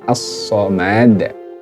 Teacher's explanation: Dibaca qalqalah kubra. Sebab huruf qalqalahnya adalah huruf hidup yang diwakafkan. Matinya karena diwakafkan.